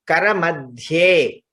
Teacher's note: Kara madhye, dha is mahaprana